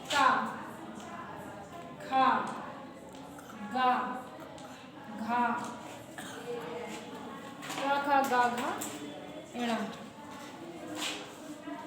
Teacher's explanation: ठीक, का को जब बोलेंगे तो का बोलेंगे तो जो हमारी जीभ होती है वो तलवे से लगती है का बोलने में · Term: स्पर्श व्यंजन